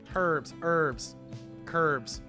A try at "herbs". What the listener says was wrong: The H is silent. Herbs. Don't say the H.